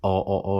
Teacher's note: that O is way back there